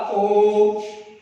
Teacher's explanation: प्लुत स्वर इसी प्रकार से होता है जिसके उच्चारण में 3 मात्रा का समय लगता है, अर्थात 1 मात्रा, 2 मात्रा और इसमें 3 मात्रा का समय लगता है, उसे प्लुत कहते हैं। जैसे ओ, इसको हमने खींच करके बोला ओ, यह 3 मात्रा का समय लगता है